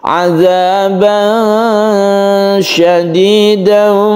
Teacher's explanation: Ikhfa artinya samar, maka ketika kita membaca tanwin bertemu shin ini kita samarkan ya. Tidak boleh jelas, tidak boleh dimasukkan ke huruf berikutnya, tapi antara keduanya, antara idhar dan idgham, itu disebut dengan ikhfa. · Tidak boleh jelas, tidak boleh dimasukkan ke huruf berikutnya, tapi antara keduanya, antara idhar dan idgham, itu disebut dengan ikhfa. Caranya yaitu ketika kita membaca tanwin ini kita bersiap membaca shin. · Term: ikhfa hakiki